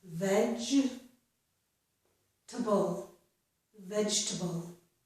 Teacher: And in this word, it's the word vegetable, we normally do not pronounce that letter E in the middle of the word. So we pronounce this as vegetable, vegetable. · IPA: /vedʒ.tə.bl̩/